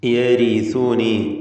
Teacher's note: യരിസുനി റാഇന് തർക്കീഖാണ്, മക്സൂറത്തായതുകൊണ്ട്